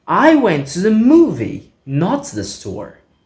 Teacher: Rising intonation on movie.